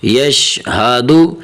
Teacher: تو یشہدو میں حرف ہا جو ہے نا تو اسے موٹا کر کے پڑھنا چاہیے